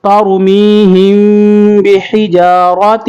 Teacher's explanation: را کو پر کریں گے اور تین پہ اخفا کریں گے